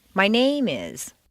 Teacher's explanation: If you stress name, it sounds as if you're going to continue with more personal information.